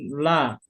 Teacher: Ujung lidah, ujung dua tepi lidah dengan langit-langit depan